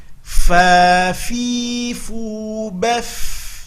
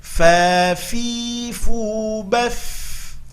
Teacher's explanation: hati-hati nampakkan mengalir nafas ketika membunyikan, karena ada sifat hamas pada huruf fa